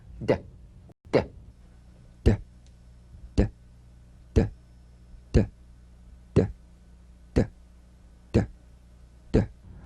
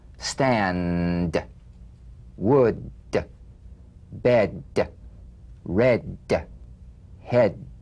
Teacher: Play this D drum beat on the springing away of the tongue from the upper gum ridge. Feel a pulsation in the tongue. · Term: palatal stop consonant